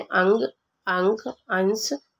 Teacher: अनुस्वार के उच्चारण में नाक से अधिक सांस निकलती है और मुख से कम